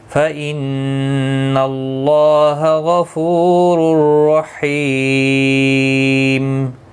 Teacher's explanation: رحیم، حی یا مدہ ہے، ایک الف کی مقدار کے برابر کھینچ کر پڑھیں گے، اور وقف کی صورت میں میم ساکن پڑھا جائے گا، وقف بالاسکان ہوگا، مد العارض وقفی ہوگا، 3 سے 5 الف یا 3 سے 5 سیکنڈ کھینچ کر وقف کریں گے